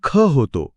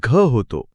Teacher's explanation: क मध्ये हवा मिसळली की त्याचा खतो आणि ग मध्ये हवा मिसळली की घतो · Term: महाप्राण